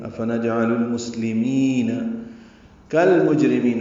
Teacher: افنجعل المسلمین کالمجرمین، کاف کو لام سے ملا دیں گے، یہ بھی اظہار قمری ہے، لام پڑھا جا رہا ہے، جیم ساکن پہ قلقلہ ہے، را باریک ہے، اور میم میں میم کو لمبا کریں گے، نون ساکن پہ وقفاً اظہار ہوگا.